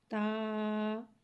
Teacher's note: जबान की नोक और ऊपर के दांतो की जड़ से अदा होता है · تا، تا کو ایک الف یعنی 2 حرکات کے برابر کھینچ کے پڑھتے ہیں۔ تا حرف نطیہ ہے، زبان کی نوک اور اوپر کے دانتوں کی جڑ سے ادا ہوتا ہے۔ تا، تا کو ایک الف یعنی 2 حرکات کے برابر کھینچ کے پڑھتے ہیں۔